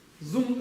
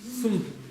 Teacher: Зум это в амдовском, ну на востоке так произносится. А мы произносим это как са, но низкое.